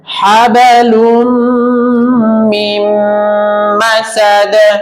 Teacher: এই নুন বাদ আমি ডাইরেক্ট মিমের সাথে গুন্না করে মিলাবো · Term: ঈদগামে বাগুন্নার